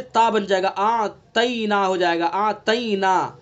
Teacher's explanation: اِنَّا أَعْطَيْنَاكَ الْكَوْثَرَ، طینا، طا کو پر کریں گے، ابھی میں نے بتلایا حروف مستعلیہ میں سے 7 حروف خصا ضغط قذ یہ ہمیشہ ہر حال میں پر پڑے جاتے ہیں. اگر ہم نے طا کو پر نہیں پڑھا ہے تو تا بن جائے گا، تا سے تا بن جائے گا، آتینا ہو جائے گا، آتینا، تو تا جیسے بنا تو یہ لحن جلی غلطی ہو گئی.